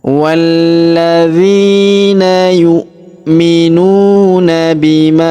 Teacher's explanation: Perhatikan huruf nun sukun bertemu huruf zi, maka kita dengungkan dan kita samarkan cara bacanya. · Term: hukum ikhfa